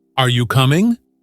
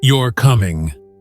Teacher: are you coming should have a rising intonation while you're coming should have a falling intonation